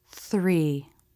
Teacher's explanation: in the thr cluster, the lips will round a little bit for the r as you make the th three.